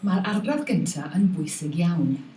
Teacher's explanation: So the V is just not there for this speaker. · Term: loss of V